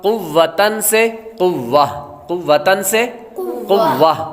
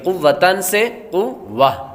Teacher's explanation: کلمے کے آخر میں گول تا پر کوئی بھی حرکت ہو یا تنوین ہو تو اسے وقف میں ہا ساکن سے بدل دیں گے، وقف میں ہا ساکن۔